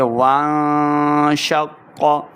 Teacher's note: شین کو قاف کے ساتھ ملائیے، قاف کے اوپر شد کی علامت ہے، قاف موٹا پڑھا جائے گا